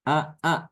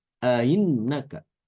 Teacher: dengan tahkik ya karena kalau membaca tahkik itu dia berarti ee dua kali mengucapkan Hamzah yang ada pada pangkal tenggorokan